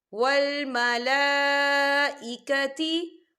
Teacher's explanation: اس میں مد بھی ہے تو ہم اسے 4 حرکت کے برابر کھینچ کے پڑھیں گے